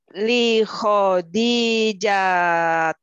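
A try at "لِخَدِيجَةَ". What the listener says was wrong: Aywa, li Khadijata ya.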